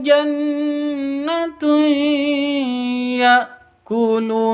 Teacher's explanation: tanwin bertemu dengan Ya bacaan Idam bunah cara bacanya masuk ke ya pakai dengung masuk ke ya disertai dengung dua ketuk